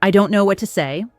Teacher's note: Confused, "I don't know what to say," with a questioning, uncertain tone, voice rising at the end